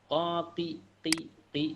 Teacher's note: Memang kalau kasroh cenderungnya lebih tipis dibanding ketika domah dan fathah ya.